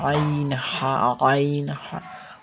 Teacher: আইনটা হবে 2 নম্বর মাখরাজ হলকের মধ্যখান থেকে